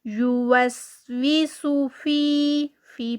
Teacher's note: یوسویسو یہاں پر بھی سین ہے تو یوسویسو یہاں پر صرف حرکت ہے سو کر کے اس کو لمبا نہیں کرنا